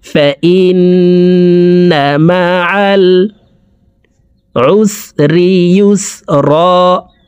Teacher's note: 3 সেকেন্ড পরিমাণ গুন্নাহ করে পড়ব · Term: ওয়াজিব গুন্না